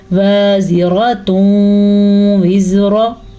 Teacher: इदगाम के साथ गुन्ना लाजमंद है, तो हम इस इदगाम के साथ गुन्ना करेंगे। · नून तनवीन के बाद आ गया है वाओ, तो इन दोनों को आपस में हम मिला देंगे।